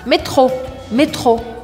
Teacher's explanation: Ao invés de fazer um R enrolado, a gente vai fazer o R francês, que é aqui no meio da garganta, como se fosse um H do inglês, mas um pouco mais vibrado